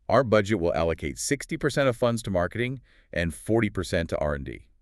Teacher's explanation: That descending intonation, it functions linguistically as a period, a full stop. It closes the thought. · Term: downward inflection